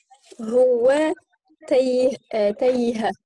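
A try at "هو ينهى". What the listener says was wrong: C'est pas un ta. C'est pas un ta. C'est pas un ta.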